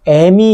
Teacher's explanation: 어미 할 때 이가 여기 있고, 자, 어는 여기 있는데, 얘가 마찬가지로 어에 영향을 미쳐서 어가 전설모음의 에로 바뀐다는 거죠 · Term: 전설모음화